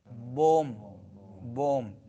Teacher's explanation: با واو میم، یہ تینوں ہونٹوں سے ادا ہوتے ہیں